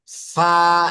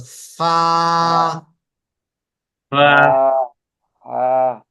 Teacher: উপরের দাঁত আমার নিচের ঠোটের পেটের সাথে লাগতেছে ফা এবং বাতাস বের হবে আমরা এখানে হাত দিয়ে দেখতে পারি বাতাস বের হয় কিনা >>